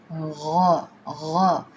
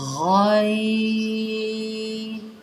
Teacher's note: یہ ادنیٰ حلق سے نکلتا ہے